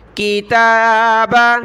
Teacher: تا کے اوپر کھڑا زبر ہے، ایک الف کی لمٹ میں ہم نے اس کو کھینچنا ہے